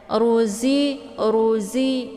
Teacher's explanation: Jadi safir itu desis anginnya itu lebih jelas kalau dibandingkan dengan hamas ya. Ruzi, ruzi ya.